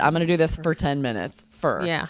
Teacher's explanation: when I say for like I'm going to do this for 10 minutes. I for sure drop that vowel and it sounds like for like this like I just said I'm going to do this for 10 minutes for.